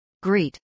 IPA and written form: ɡrˈiːt (greet)